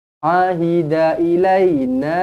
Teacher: Sebab hamzah dan ombak rindu sekali lagi terpisah. Jadi mad jaiz munfasil 4 atau 5 harakat.